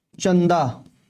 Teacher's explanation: इसमें वायु केवल नाक से निकलती है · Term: अनुस्वार